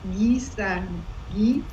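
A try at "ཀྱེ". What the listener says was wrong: Kie. C'est un K. K.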